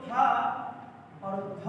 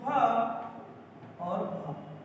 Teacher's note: इन वर्णों के उच्चारण में हकार यानी ह की ध्वनि होती है साथ में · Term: महाप्राण